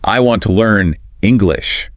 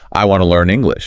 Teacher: That wanna is a classic example. Want and to just blend together. The sounds actually change. So it's not just speaking faster, it's about how the words link up.